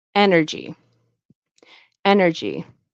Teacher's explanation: to make a j sound, so it's not a g sound, it's a j.